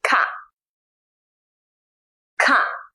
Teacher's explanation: is an n-aspirated k let me explain a bit in english k has an aspirated sound in other words air is coming out of your mouth when you say it